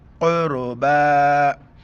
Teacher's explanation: इसी तरह यहाँ पर कुछ नहीं, क़ुरबया नहीं पढ़ेंगे, सिर्फ आखिर में बा के ऊपर कड़ा ज़बर है। कड़ा ज़बर की वजह से एक अलिफ के मिकदार ऊपर खींचना है